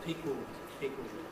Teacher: the schwa can be lost and we end up with a syllabic pickled · Here's the word pickled, which may be pronounced pickled, with a schwa, but this is one of those, like suddenly, where the schwa can be lost and we end up with a syllabic L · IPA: pɪk əld→ ld